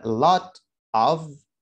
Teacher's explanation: maka t, suara t pada kata lot bisa kita rubah t tadi menjadi d